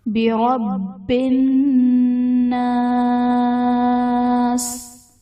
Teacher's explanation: الناس میں نون مشدد ہے، یہاں پر غنہ کریں گے